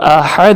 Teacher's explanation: یہاں پہ ہا حلق کے درمیان سے، احد ٹھنڈے سانس والا ہا